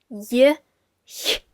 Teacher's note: So if that method makes it easier for you, you could also go for pronouncing a J and then lowering your tongue and just, shooting air through